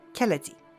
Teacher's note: aspirated stops at the beginning of the word, in this case k, those soften